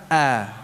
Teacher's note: maka perlu dijaga sifat hamzahnya a tetap tipis jangan terpengaruh dengan tafkhimnya lam ya jangan sampai terpengaruh dengan tafkhimnya ya Sehingga diucapkan tebal Allah